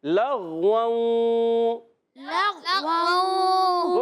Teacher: لام کو غین سے ملاتے ہیں، غین کو بھی نہیں ہلانا